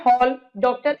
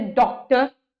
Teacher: यह ध्वनि आ और ओ के बीच में स्थित होती है